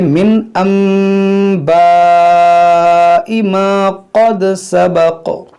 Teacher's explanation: کیونکہ نون ساکن کے بعد یہاں پر با ہے، تو یہاں پر ہوگا اقلاب. اس نون کو ہم اس میم سے بدل کر پڑھیں گے، اس نون ساکن کو، اس کو پڑھیں گے من انباء ما قد سبق.